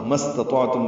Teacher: اب یہاں پہ دو الف نہیں پڑھیں گے، ما کا الف اور استطاعت کا الف۔ سین ساکن پہ ہمس ہوگا، سانس جاری رہے گی اس کے پڑھنے میں۔ تا باریک ہے، تو پر پڑھیں گے، مستطعتم۔